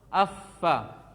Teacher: Ujung gigi seri atas dengan perut bibir bawah.